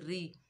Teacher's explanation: रॉ के नीचे ज़ेर है, ज़ेर की वजह से रा बारीक पड़ जाएगी